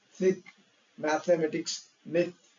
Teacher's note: సో మీరు tongue ని మీ teeth మధ్యలో ఉంచుకొని అప్పుడు మీరు you push your air between your top teeth and tongue.